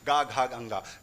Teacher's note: इन व्यंजनों को बोलने में कंपन हो रहा था गले में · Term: सघोष